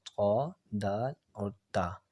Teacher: زبان کی نوک، سامنے والے جو دو دانت ہیں نا ہمارے، ثنائے علیہ جن کو کہتے ہیں، ثنائے علیہ کی جڑ سے لگے تو پھر یہ تین حرف ادا ہوتے ہیں